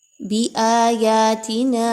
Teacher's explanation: با واپس بو واو مدہ ہے 1 سے 2 الف کے برابر اس کو پڑھیے. بِآیاتِنَا آ اور یا دونوں کی مقدار ایک جیسی رکھی جائے گی